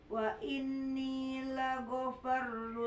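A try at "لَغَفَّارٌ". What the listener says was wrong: panjangin lagofarul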